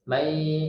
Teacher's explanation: masih ada bunyi mendengungnya. Jadi masih berbunyi may, ada suara hidung.